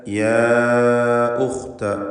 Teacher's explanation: അലിഫിനെ 4-5 ഹർക്കത്തിൻ്റെ അളവിൽ ദീർഘിപ്പിക്കൽ അനുവദനീയമാണ്. യാ ഉഖ്ത, ഉഖ്ത എന്ന് പറയുമ്പോൾ തഫ്ഖീം ചെയ്യേണ്ട അക്ഷരമാണ്, ഇസ്തിഅലാഹിൻ്റെ ഹർഫാകുന്നു. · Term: മദ് മുൻഫസിൽ ജായിസ്